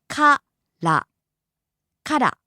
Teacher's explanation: starts high and drops low